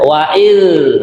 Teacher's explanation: di sini cara mengucapkan dal ujung lidah ditempelkan gigi yang atas.